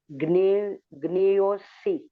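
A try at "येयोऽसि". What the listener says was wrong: Not gne, it is ye. Ye.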